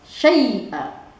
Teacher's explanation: Jadi huruf ya mati dibacanya i, bukannya e.